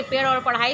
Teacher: पेड़ वाला ढ और ढ का पढ़ाई वाला ढ का उच्चारण करने में वायु जीभ से टकराकर वापस आती है और फिर बाहर निकलती है, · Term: उच्छिप्त व्यंजन